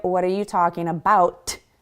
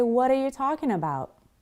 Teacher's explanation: Relax the sound of the T at the end of about so it sounds like about. I don't close that T sound in my mouth. I don't say, what are you talking about?